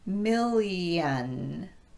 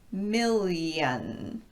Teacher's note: So in the case of L and N, these are both continuent consonants, meaning that there's no stoppage of the airflow. When you don't stop the airflow before you head into the long e sound, it really sounds a lot like a Y sound. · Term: assimilation